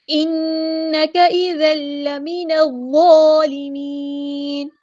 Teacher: نون پہ غنہ زمانی ہو رہا ہے، ایک الف کے برابر یہاں پہ رکیں گے